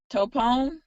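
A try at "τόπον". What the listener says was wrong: Tapon, yes.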